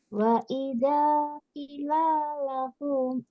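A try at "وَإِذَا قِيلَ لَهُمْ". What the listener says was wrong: Qila. Panjang, Bu. Qila. Ini ada kasrah bertemu ya sukun. qila.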